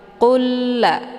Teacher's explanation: masuknya di sini adalah kamil secara sempurna tanpa tersisa bunyi lam sukunnya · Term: idgham mislain